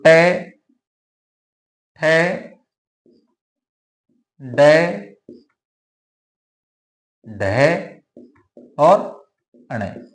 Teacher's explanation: जीभ का अग्र भाग यानी आगे का भाग मूर्धा यानी मसूड़ों को स्पर्श करता है, इनके उच्चारण में जीव का अग्र भाग मूर्धा को स्पर्श करता है। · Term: ट वर्ग